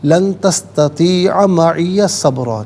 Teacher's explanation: تستطیع میں عین کو کھینچیں گے نہیں، تستطیع نہیں، لن تستطیع معی صبرا۔